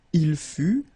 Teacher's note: Il fut, final T not pronounced